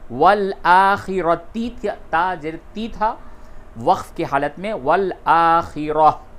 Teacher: یہ تا جو ہے حالت وقف میں ہا سے بدل دیتے ہیں